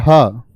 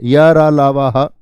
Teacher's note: ह को आप बोलोगे तो स्वरतंत्रियों के बीच से हवा निकलती है